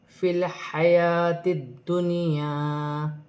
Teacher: یہاں الف مدہ ہے، 1 الف کی مقدار سے کھینچ کر پڑھا جائے گا، لیکن نون ساکن میں غنہ نہیں ہوگا۔